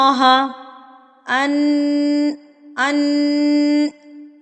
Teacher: एक हरकत के बराबर नाक में आवाज को रखा है इसको कहते हैं गुन्ना